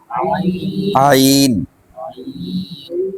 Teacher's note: عین کو جب پورے طریقے سے ادا کرتے ہیں نا تو ایک طریقے کا مطلب کہ ویبریشن ہوتا ہے حلق کے اندر